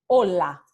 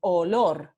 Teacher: Vamos a comenzar con la lateral alveolar sonora